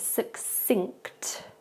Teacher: This is quite difficult because we have the ng sound at the end